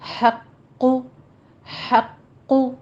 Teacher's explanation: ہا کو وسط حلق سے ادا کیجیے اور آگے قوف کو پر پڑھنا ہے